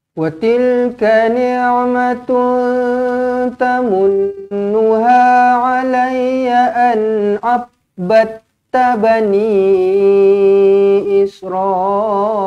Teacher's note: huruf ain pastikan kita tekankan betul-betul dekat tengah-tengah kerongkong. Wa tilka jangan kadang-kadang orang ni nak tekankan ain punya pasal sampaikan ni tu jadi ne tau.